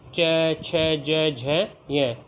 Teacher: ये सभी कहाँ से बोले जाते हैं? तालु से, इसलिए ये तालव्य के अंतर्गत आएंगे। इनका जो स्थान होगा वो तालव्य कहलाएगा।